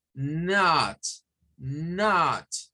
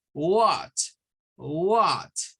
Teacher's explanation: Es como querer decir la vocal A en forma de O. La O es redonda. Entonces, not.